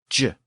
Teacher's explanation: it was also a sibilant, like sh and ch. In this case, it was the J sound, j.